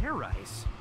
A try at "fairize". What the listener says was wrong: Idiot. It's pronounced fairize. There's no ice in it.